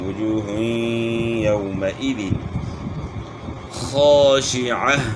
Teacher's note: وجوہ یومئذ خاشعہ، خا کے اوپر کھڑا زبر ہے، اس کو ہم نے ایک الف کی مقدار کے برابر کھینچنا ہے، عین کی آواز گلے کے درمیان سے نکالنی ہے · یہاں واؤ مدہ ہے، واؤ ساکن سے پہلے پیش ہو تو اس کو آپ نے ایک الف کی مقدار کے برابر کھینچنا ہے، اور یہاں جو ہے غنہ ہوگا وجوہ یومئذ، دو پیش کی تنوین کے بعد حروف یرملون میں سے یا آ گئی تو ادغام مع الغنہ ہے